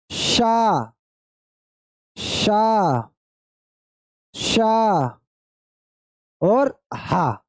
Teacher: इनके उच्चारण से हवा मुख से ज्यादा निकल रही है